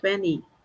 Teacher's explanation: Ah, parece que você não fala 20, parece que você fala 20. É, às vezes acaba não tendo esse som do T mesmo